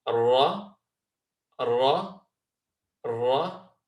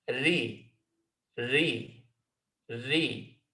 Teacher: So the two sounds we have, both from the same point of origin of Taraf al-Lisan, the tip of the tongue, are Ra, Ra, Ra, and Ri, Ri, Ri.